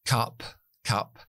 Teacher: es oclusiva explosiva pero sin voz fonéticamente la escribimos con una K la c en fonética No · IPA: /kʌp/